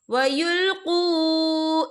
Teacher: यहाँ देखिए कुल्लमा रुद्दू, यहाँ पे वाव साकिन है, वाव साकिन से पहले पेश है और इस पर छोटी सी मद भी है, तो हम इसे 3 या 4 हरकत के बराबर खींच के पढ़ेंगे। कैसे? कुल्लमा रुद्दू इलल फितनती उरकिसू फीहा।